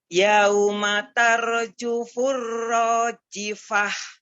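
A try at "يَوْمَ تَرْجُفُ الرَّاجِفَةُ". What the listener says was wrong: Tar ditebalkan lagi ro sukun sebelumnya fathahnya.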